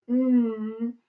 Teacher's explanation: if we say it and put our hand through our throat, N, we feel a little vibration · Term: voice sound